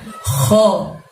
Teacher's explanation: kho kalian bacanya keluarkan hurufnya dari tenggorokan ya teman-teman, tenggorokan bagian atas. Jadi seolah-olah bunyi suara ngorok ya, kho.